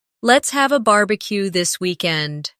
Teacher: Stress barbecue and weekend. So, it sounds lively and friendly.